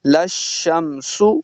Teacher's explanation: سین کو سیٹی کے ساتھ پڑھیں گے